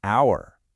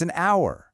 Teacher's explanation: You notice how the H is silent? The first sound you actually hear is ow, and that's a vowel sound, so it's an hour.